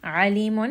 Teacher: ayn is going to be from the middle of the throat. So you're going to feel a little bit of strangulation when you say this letter.